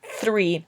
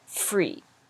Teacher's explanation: TH is where we put our tongue in between our top teeth and our bottom teeth, and we blow. Three, and free.